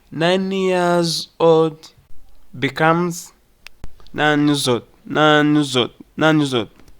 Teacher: The Y of years links with 9.